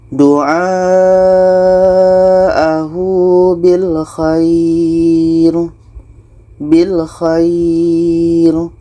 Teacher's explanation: Kita memperpanjangnya setidaknya selama dua harakat sebelum berhenti pada huruf terakhir. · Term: mad layyin